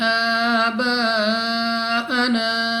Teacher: next ہمارے پاس الف سے پہلے زبر ہے الف مدہ، مگر الف کے اوپر مد ہے، تو ہم نے اس کو 3 یا 4 سیکنڈ تک کھینچنا ہوگا